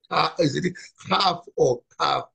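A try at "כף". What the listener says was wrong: Kaf, yeah, right, good.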